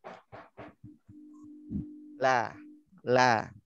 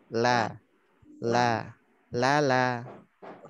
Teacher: Letaknya di ujung lidah, di ujung tepi lidah. Huruf lam tuh ngelebar. Ketemu gusi gigi seri bagian atas. Tempelin. La.